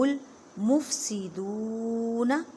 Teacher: دو واو ساکن سے پہلے پیش ہے، واو مدہ کا قاعدہ کریں، ایک الف کی مقدار میں کھینچ کر پڑھیں